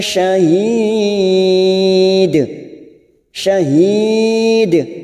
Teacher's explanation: Mad Ar sukun empat harakat kita panjangkan ujungnya kita pantulkan karena ada huruf Dal